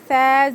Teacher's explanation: زبان کی نوک اوپر کے دو دانتوں کے کنارے پہ لگانے سے ثا ادا ہوتا ہے